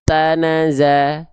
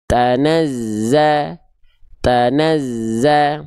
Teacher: Yang kedua kurang tepat karena zainnya seolah tidak ada tanda tasydid